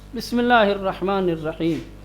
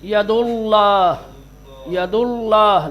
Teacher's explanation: تغلیظ کے ساتھ یعنی موٹا بنا کر کے پڑھیں گے، اور اگر لام سے پہلے زیر ہوگا تو اللہ کے لام کو کسرے کے ساتھ پڑھیں گے، باریک پڑھیں گے، موٹا نہیں بنائیں گے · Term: ترقیق